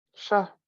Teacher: that was Sha seventh row High tone Shah which means meat like flesh